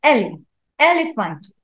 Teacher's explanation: the word elephant has primary stress on first syllable